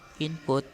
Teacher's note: In some cases, assimilation causes the sound spoken to differ from the normal pronunciation in isolation, such as the prefix in of English, input pronounced with M rather than N. In other cases, the change is accepted as canonical for that word or phrase, especially if it's recognized in standard spelling.